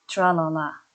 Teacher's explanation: the tongue tip is raised while the rest of the tongue remains down, permitting air to escape over its sides. Hence, l is called a lateral sound.